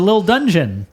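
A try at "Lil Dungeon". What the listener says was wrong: There's no T in it though. You said little. The second time you said little.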